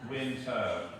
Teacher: most R's at the end of words just schwa, winter, as opposed to winter.